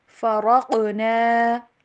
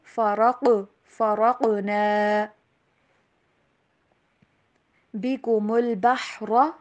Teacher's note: را کو موٹا قاف کے اوپر کلکلا ہوگا، کاف کے اوپر جو موٹا قاف ہے اس کے اوپر اگر جہاں کہیں پہ بھی جزم ہوگی تو آپ اس کے اوپر کلکلا کریں گے۔